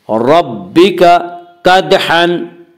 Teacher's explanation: दाल में कलकला होगा। दाल हुरूफ कलकला में से है।